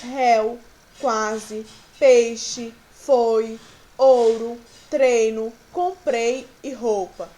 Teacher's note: os fonemas vocálicos I e U são considerados semivogais, pois são pronunciadas de maneira mais fraca